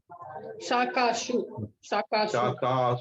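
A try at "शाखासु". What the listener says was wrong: Shakasu, Sa, not Sha.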